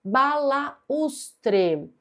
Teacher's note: Nós temos um u tônico formando iato com a vogal da sílaba anterior. E é por isso que essa palavra é acentuada.